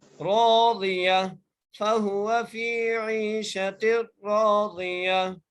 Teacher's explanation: تا کو ہم ہا میں چینج کر رہے ہیں وقف کی صورت میں